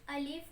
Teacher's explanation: अलिफ मुंह के खाली हिस्से से अदा होता है।